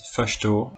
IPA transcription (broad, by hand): fəʃto